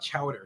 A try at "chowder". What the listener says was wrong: Say chowder. Chowder. You're saying duh. Chowder. They're going to come back and tell you that you're not saying your R's. You're turning them into